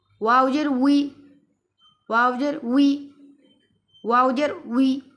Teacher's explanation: ওয়াও বলার সময় মুখ গোল হবে, কিন্তু উই যখন আসবে তখন মুখ স্বাভাবিক অবস্থায় চলে আসবে